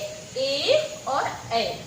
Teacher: इनको कंठ और तालु की सहायता से बोला जाता है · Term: कंठ तालु